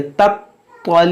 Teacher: تا جو ہے باریک پڑھنا ہے اور طا کو موٹا پڑھنا ہے